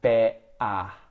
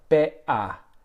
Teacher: And instead of saying better, they're saying better. And so it's actually at the back of the throat there that the tongue is hitting it to stop the air, and it sounds like better.